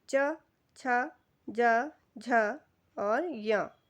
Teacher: यह जो च वर्ग के व्यंजन हैं इन सबका उच्चारण हमारे तालु से होता है।